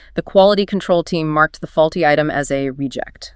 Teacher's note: The noun reject is the person or the thing that's been discarded or thrown away. Stress on re